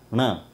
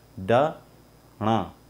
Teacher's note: नासिक्य मतलब इनमें नाक का भी इस्तेमाल हो रहा है, नाक से भी उच्चारण में हम मदद ले रहे हैं। तो इसको उच्चारण के लिए हमें नाक की मदद लेनी है।